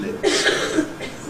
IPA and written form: lɪps (lips)